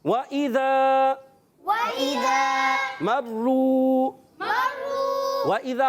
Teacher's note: حمزہ کو خوب واضح کریں گے، زال کو کلیئر رکھنا ہے، ایک الف کھینچ کر ادا کریں گے کیونکہ حروف مدہ ہے، زال الف زبر، زا الف مدہ۔